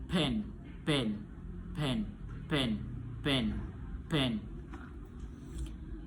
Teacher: udara ditahan lalu dilepaskan secara tiba-tiba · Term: plosif